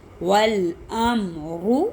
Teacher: را پہ پیش را موٹا